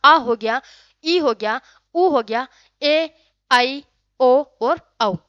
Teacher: ये आपके दीर्घ स्वर जो होते हैं इनके उच्चारण में अधिक समय, जो आपका जो ह्रस्व स्वर था उससे थोड़ा ज्यादा है, दुगना समय लगता है